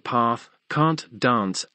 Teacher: In words like path, can't, dance, AME generally has the vowel of pat